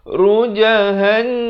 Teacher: wajibul gunnah, wajib dengung 2 harakat.